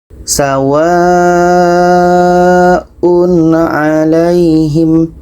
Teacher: tanwin bertemu a, izhar halqi, tidak dengung